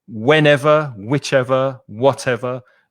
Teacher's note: the first syllable is stressed harder than the second.